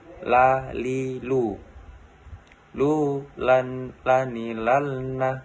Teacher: Melafalkan huruf la keluar dengan menyentuhkan lidah terdekat dengan langit-langit bagian depan.